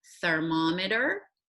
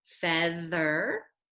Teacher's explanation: th and it can stand for two different sounds the first sound being a unvoiced sound like thermometer th can also stand for the voiced sound like feather